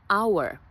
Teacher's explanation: Jer je to tiho h, ne čuje se, nije kao hotel gdje si ga izgovorila, već hour, nema ga, kao da je prešućen.